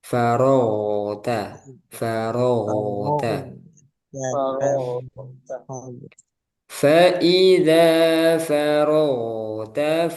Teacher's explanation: Gin jangan sampai ada mantul farag tapi ngalir terus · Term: rakhawah